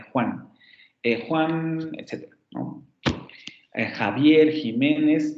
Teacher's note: tenemos el fonema fricativo velar sordo, como en Juan